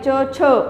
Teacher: तालव्यो जिभेच्या ताळ्याला लागून उच्चार होणारे